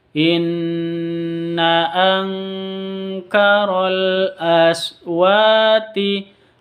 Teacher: Angkaroh nun mati bertemu dengan kaf, samar disertai dengung, bacaan ikhfa hakiki.